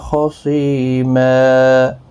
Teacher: خصیمہ، سی یا مدہ ہے، 1 الف کی مقدار کے برابر کھینچیں گے، اور یہاں پر وقف کی صورت میں 2 زبر کو بدل کر 1 زبر کے ساتھ وقف کریں گے، وقف بالابدال ہوگا، 1 الف کی مقدار کے برابر کھینچ کر وقف کریں گے۔